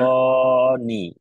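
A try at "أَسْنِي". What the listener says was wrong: নিতে একটা টান হবে, ইয়া আছে,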